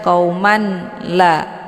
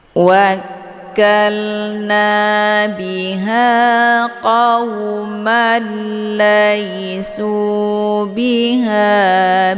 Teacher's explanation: harakat tanwin fathah dileburkan ataupun dimasukkan ke dalam huruf la dengan cara ditekan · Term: Idgham bila ghunah